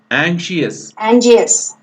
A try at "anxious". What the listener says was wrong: G కాదు,